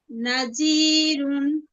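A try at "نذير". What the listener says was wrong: জালের মাখরাজটা একটু উচ্চারণ করেন। জি, নাযীরুন, নাযীরুন।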